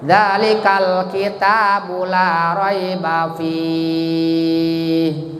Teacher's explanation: Kal lamnya jadi alif lam qamariyah. Kal arti lam qamariyah itu lamnya harus kedengaran, harus dohir lamnya.